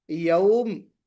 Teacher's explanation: یوم، اس تنوین کو ہم جزم میں یا سکون میں بدل دیں گے، تو یومن یا یومن کو ہم یوم پڑھ رہے ہیں، تو میم کے اوپر سکون عارضی ہے اور اس سے پہلے واو لینیہ ہے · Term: مد لین عارض